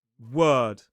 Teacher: Lips are neutral. The tip of the tongue is kind of in the middle of the mouth and it's overall quite relaxed. Now, because of those double dots, it's a slightly long sound. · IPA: /ɜː/